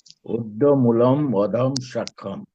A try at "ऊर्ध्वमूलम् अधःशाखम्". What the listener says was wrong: ठीक है, बस यहाँ पे एक हुआ है कि ऊर्ध्वमूलम अधः शाखम होगा, आपने कहा अधम।